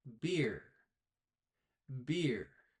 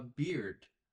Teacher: When you talk about the hair on a man's face, you stop the air at the end of the word.